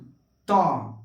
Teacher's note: आपका जीभ दांत में स्पर्श करेगा, 100% करेगा। अगर नहीं कर रहा है तो समझिए कि उसका उच्चारण स्थान गलती है।